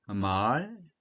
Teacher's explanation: 말은 상성이니까 낮았다가 높아진 소리